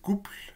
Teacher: vous verrez que à la fin il n'y a pas de vibrations des cordes vocales